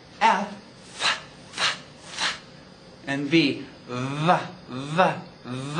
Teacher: voiced f- f- f- v-- v-v but they're the same production lip to teeth we actually use it like a filter we let air flow through · v- v- v- f- f- f how we produce it is top teeth to bottom lip so they call those Lao Dental